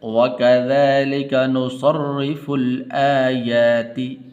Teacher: را کے نیچے زیر ہے تو اس لیے اس کو باریک کر کے پڑھنا ہے